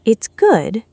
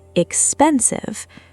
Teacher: Fall rise intonation, where the pitch drops first and then climbs back up again, [music] all within the very same phrase.